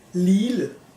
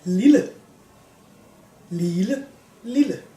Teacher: The vowel becomes long and kind of sharp. · the double L is always an L sound, but changes the sound of the vowel in front of it.